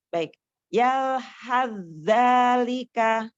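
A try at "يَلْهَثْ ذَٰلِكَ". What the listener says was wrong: Nah, Masya Allah. Lanjut.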